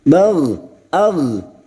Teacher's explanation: Huruf ghain sukun, hati-hati memantul ya, jangan dipantulkan.